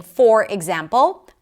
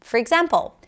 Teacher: I turned the or in the word for into a schwa, for, to allow other words to stick out. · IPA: fər